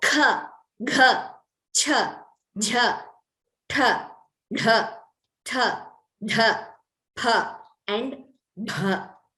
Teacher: Those which require more breath, they are called mahapranas.